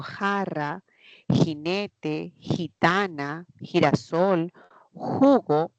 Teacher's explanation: Cuando digo jarra, jinete, gitana, girasol, jugo, vendría a ser sonido velar. Es un fricativo.